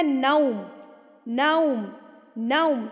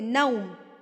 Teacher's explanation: زبر پڑھتے ہوئے آپ کے ہونٹ کھل جائیں گے اور واو پڑھتے ہوئے آپ کے ہونٹ بالکل گول ہو جائیں گے